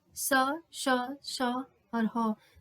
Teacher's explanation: जो वायु है वो रगड़ करते हुए वायु बाहर निकल रही है मुख से, स, श, श और ह, तो इन्हें कहेंगे ऊष्म संघर्षी।